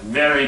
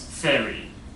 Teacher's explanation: V tends to be devoiced by people. So the V becomes an F